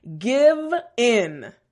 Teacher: that V sound front teeth bottom lip and a little bit of vibration